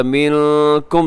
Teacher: منکم نون ساکن کے بعد کاف ہے، یہاں پہ اخفا ہوگا